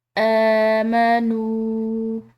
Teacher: واو جو کہ واو مدہ ہے، اس کے بعد آنے والی الف کے اوپر چھوٹی مد ہے تو ہم اس کو مزید کھنچاؤ دے کر پڑھیں گے